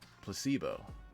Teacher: Placebo. The stress is on the middle syllable.